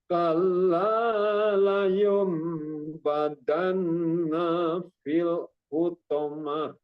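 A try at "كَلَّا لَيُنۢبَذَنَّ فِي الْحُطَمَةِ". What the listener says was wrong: Dinanya tadi agak kepanjangan, dinanya. Itu nggak ada matobi'inya. Pas di zan nafil, nah gitu.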